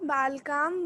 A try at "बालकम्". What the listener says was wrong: Minute, एक बालकाम नहीं, बालकम। मूल शब्द में सिर्फ मां जोड़ना है।